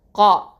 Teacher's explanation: ரெண்டு அலிஃப் நீட்டி ஓதணும்